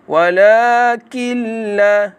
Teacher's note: nun mati bertemu dengan lam, iaitu idgham bila gunnah. Bacanya tanpa dengung. Hendaklah baca dengan jelas dan terang.